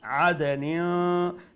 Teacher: Noon has a tanween, and after tanween is letter ta. So we have to pronounce the tanween with ikhfa.